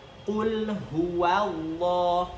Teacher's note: Huwanya jangan terikut tebal, tapi waw di sini harus ditipiskan. · Nah, di sini ada lafzul jalalah atau kalimat Allah, yang mana di sini lam di kalimat Allah itu memiliki sifat yang tebal atau tafkhim namanya. Jadi di sini harus kita perhatikan bahwa perubahan dari waw yang hurufnya tipis kemudian masuk ke lam yang bertasydid dan memiliki sifat tafkhim.